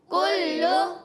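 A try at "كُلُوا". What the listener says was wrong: کلو، کاف باریک رکھنا ہے، کسی کی آواز کلو، کاف موٹا نہیں کرنا، یہ باریک کاف ہے، کلو، کلو،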